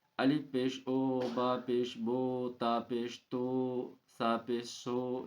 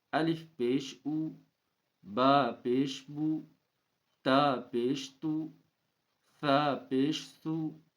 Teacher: پیش کی آواز آگے کو جاتی ہے اور ہونٹوں کے کنارے ملتے ہیں، اور بیچ کا حصہ کچھ کھلا رہتا ہے۔ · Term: معروف